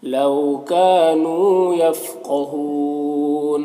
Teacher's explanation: काफ में अलिफ मद्दा, नू में वाव मद्दा, दोनों को एक अलिफ के बराबर खींचेंगे। यहाँ पर कौफ हुरूफ मुस्तालिया में से पुर पढ़ेंगे। · यहाँ पर कौफ हुरूफ मुस्तालिया में से पुर पढ़ेंगे। यहाँ पर वक्फ की सूरत में मद्दा आरिज़ वक्फ़ी होगा